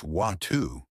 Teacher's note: But in British English, it's watu. The T is softer.